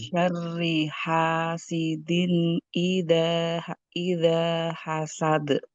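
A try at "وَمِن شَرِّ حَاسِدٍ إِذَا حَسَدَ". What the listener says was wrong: Eh, Sebelum dilanjutkan, insya Allah lebih diperhatikan lagi di bagian kol-kolahnya ya Bu ya. Nah, jadi kol-kolah itu, apalagi yang dibaca di akhir, dia dibacanya lebih berat.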